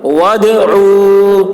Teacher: وَادْعُوا دال میں قلقلہ ہوگا